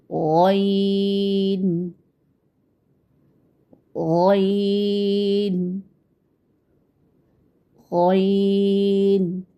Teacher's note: जी बिल्कुल, जब हम इस हर्फ को अदा करते हैं तो आप देखते हैं कि आपके हलक के इब्तदाई हिस्से से हर्फ अदा हो रहा है और ज़बान की जड़ को आप तालु की तरफ बुलंद करते हुए मोटी आवाज़ में पढ़ते हैं